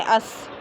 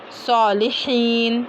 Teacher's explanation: सीन पतला होगा और सौद पुर होगा, है ना। सीन पढ़ना है तो हमको नरमी के साथ पढ़ना है, अस।